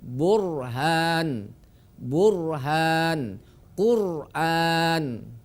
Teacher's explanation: Ketika berharokat dhammah juga dibaca tafkhim.